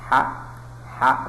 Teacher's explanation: Nah, pasang tangan, coba rasakan ha, apalagi rah ya. Ini ada ngalirnya nafas, maka huruf ha ini adalah termasuk sifat huruf hamas